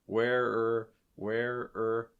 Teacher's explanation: you're actually going to kind of link those r's together a bit where or where or almost sounds like where where are you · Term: linking